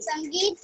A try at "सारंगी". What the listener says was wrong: सारंगी बेटा, संगीत नहीं, सारंगी। स में आ की मात्रा, र पे ऊपर न की बिंदी है, ग पे बड़ी की मात्रा, सारंगी